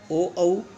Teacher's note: ओ, औ ये भी क्योंकि 2 वर्णों से बना है, अ और उ। अ कंठ है और उ का उच्चारण स्थान ओष्ठ है, इसलिए ओ, औ का उच्चारण स्थान हो गया कंठोष्ठ